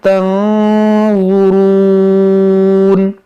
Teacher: نون ساکن کے بعد ضا ہے تو یہاں پر اخفا کریں گے, ناک میں آواز لے جائیں گے اور ضا کو نرمی سے پڑھیں گے